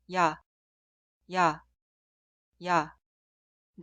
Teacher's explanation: clasifica como boca de Simple pero fonéticamente es una vocal doble el sonido inicial es y e instantáneamente termina con a